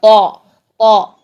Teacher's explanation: तौ की आवाज़ के लिए आपने मुंह भर के इसको अदा करना है, और आवाज़ का जो प्रेशर है ना, वो आपका पीछे हल्क की तरफ जाएगा, सामने से, फ्रंट से बिल्कुल सीधा बाहर नहीं आएगा, बल्कि आपके जो आवाज़ का प्रेशर है वो पीछे हल्क की तरफ जाएगा। · क्यों? क्योंकि आपकी ज़ुबान पीछे से, ज़ुबान की जड़ भी उठी हुई है और ज़ुबान का दरमियान भी ऊपर तालू की तरफ बुलंद है। ठीक, इस तरह से हमारे मुंह में प्रेशर बन गया है, एक बंद कमरे की तरह लॉक हो गया है।